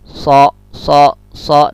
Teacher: So itu lidah kita nempel ya, belakang lidah tuh nempel dengan gigi bawah. So. Lalu dia ngikut gigi bawah.